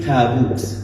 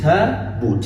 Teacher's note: Alif in Arabic is muraqqaq, right? It comes light